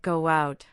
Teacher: For instance, go out might sound like go out where a slight sound appears between go and out because your lips round for the o sound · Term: linking